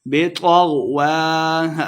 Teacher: غین اور طا کو موٹا کر کے پڑھیں گے. واو بطغوا وا کے اوپر کھڑی زبر ہے تو اس کو 2 حرکات لمبا کر کے پڑھیں گے.